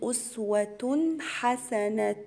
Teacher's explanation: تنوين وجاي ورا حرف الحاء هيبقى فيها إظهار حلقي، يعني هظهر التنوين · أقول أسوة حسنة في، وعندي تنوين ورا حرف الفاء يبقى هنا فيها غنة إخفاء، وكلمة في عليها علامة المد، هنا مد جائز منفصل 4 حركات